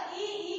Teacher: ई का उच्चारण स्थान तालु है।